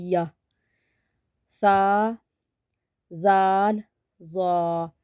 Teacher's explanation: जुबान का सिरा और ऊपर के दांतों के अंदरूनी किनारे से अदा होते हैं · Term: हरूफ लस्वी